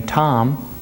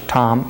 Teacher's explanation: so when you say the english word the name tom there there's a closure after the m whereas with the salish tom meaning lack of there's often a release after the m